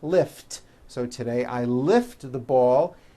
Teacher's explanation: the word lift ends with an unvoiced t